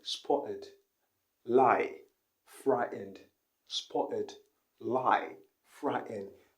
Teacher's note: she isn't pronouncing the t she wasn't pronouncing the t's in the words spotted lie frightened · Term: glottal stop